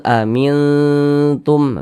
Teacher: Nah, maka cara membacanya tuh disamarkan, kemudian juga dia didengungkan. Karena dia aqrab, maka kadar ikhfanya atau kadar samarnya itu dia tinggi. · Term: ikhfa hakiki aqrab